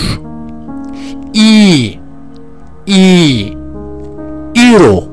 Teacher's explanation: Türkçedeki i sesi gibidir ama ondan daha uzundur